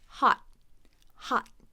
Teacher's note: so hot by itself we'll have a stop T